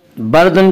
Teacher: اس کا قاعدہ یہ ہے کہ را ساکن سے پہلے زبر اور پیش آئے تو را کو پر پڑھیں گے، را ساکن سے پہلے زیر آئے تو را کو باریک پڑھیں گے، یا را ساکن سے پہلے زبر ہے اس لیے را کو پر پڑھیں گے.